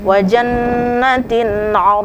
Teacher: Ain dengan Kho dengan ya dengan H itu hukumnya bacaannya izhar izhar artinya jelas maka tidak boleh ada dengung sedikitpun